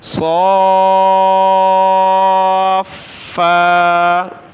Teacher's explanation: مد زبر کہہ کر، صاف فا کھڑا زبر فا، صاف فا، فا کو سخت کرنا ہے، ایک الف کی مقدار کھینچنا ہے